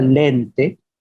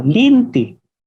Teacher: en la lengua bicol se conserva la práctica de pronunciar la E como la I. Por ejemplo, la palabra lente se puede escuchar como linti.